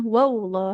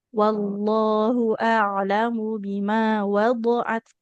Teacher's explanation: Wallahu, jangan wallah. Hati-hati lafaz Allahnya, jangan seperti ada waw sukunnya ya.